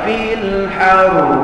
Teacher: hendaklah disembunyikan getar lidah pada huruf ra apabila ra itu bersabdu baik dalam bacaan sambung mahupun dalam bacaan wakaf antara faktor qari-qari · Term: ra bersabdu